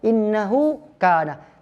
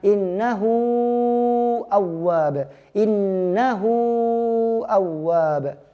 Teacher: mad silah tawilah panjangnya tidak natural · hamzah lah yang merubah menjadi mad silah tawilah